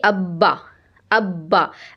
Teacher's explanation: बा दोनों होठों के तर हिस्से से · बा जब आप कहेंगी ना तो दोनों होंठ बिल्कुल आपस में टच होंगे। · ऊपर नीचे के होंठ आपके मिल रहे हैं और होंठों का अंदर वाला हिस्सा, गीला वाला हिस्सा मिल रहा है।